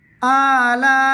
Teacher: লা 4 আলিফ টানবে।